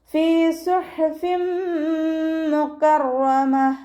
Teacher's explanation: തെൻവീനിന് ശേഷം ഇദ്ഗാം ബിഉന്നയുടെ അക്ഷരമായിട്ടുള്ള മീമ് വന്നു. തെൻവീനിനെ മീമിലേക്ക് ലയിപ്പിച്ച് ഉണ്ണയോടുകൂടി ഓതി കൊടുക്കുക · ഹ വസത്തുൽ ഹൽക്കാണ് മഖ്റജ്, സൗണ്ടിനെ ക്ലിയർ ആക്കി കൊടുക്കുക